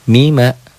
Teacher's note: Hilangin tasdidnya, mima, dobelnya nggak ada, dengungnya nggak ada, gunnahnya nggak ada